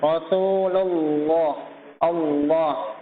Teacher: sebelum lafadz Allah ada harokat dhommah ya maka dibaca tebal